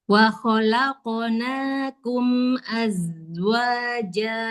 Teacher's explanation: zainya rakhawah sofirnya jelaskan zai sukunnya